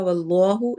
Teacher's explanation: واللہ اس میں جلالہ کو ہم موٹا پڑھیں گے